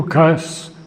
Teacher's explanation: I have accented on the first syllable, as I have done often with other words like occult, divine. It is a Russian word, and foreign words in English tend often to get their original accent shifted as far back as possible.